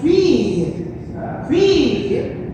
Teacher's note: Suena I. Este es un sonido que se llama iod en francés, que es como si fueran dos I.